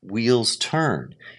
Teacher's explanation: Even though wheels is important, turn is still stronger. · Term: iamb